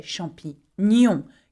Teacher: When you have a G and an N together, we say nye.